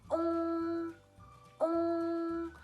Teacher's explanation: То есть губы должны быть напряжены, они должны сходиться вместе, как рыбка такая. И звук носовой, длинный и, можно сказать, узкий такой